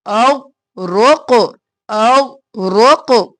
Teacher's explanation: فَأَنْجَيْنَاكُمْ وَأَغْرَقْنَا، اغرقنا نہیں کرنا، غین ساکن قاف قلقلہ. اغرق اغرق، غین بھی موٹا، رو بھی موٹا، قاف بھی موٹا